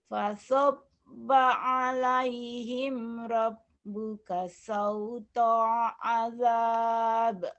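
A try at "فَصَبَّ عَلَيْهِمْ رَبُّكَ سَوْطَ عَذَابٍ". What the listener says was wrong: Fasabba alaihim rabbuka sautu adab. Sauto, jangan sauta. Adab, jangan ada jeda.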